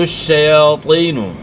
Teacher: یہاں طا جو ہے موٹے حروف میں سے ہے، طا کو آپ نے موٹا ادا کرنا ہے. یا ساکن سے پہلے زیر ہے تو زیر کو آپ نے کھینچنا ہے، ایک الف کے مقدار کے برابر مد کرنا ہے.